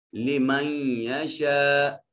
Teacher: لمن یشا، نون ساکن کے بعد حروف یمون میں سے یا ہے، ادغام بالغنہ ہوگا، لمن یشا، من میم کو جب یا سے ملائیں گے تو آواز ناک کے نتنوں میں جائے گی۔ یشا میں یہ بڑی مد ہے جس کو 3 سے 4 الف کے برابر لمبا کریں گے۔